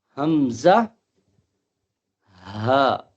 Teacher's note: تو حمزہ اور ہا کا مخرج اقصائے حلق، یعنی حلق کا سینے کی طرف والا حصہ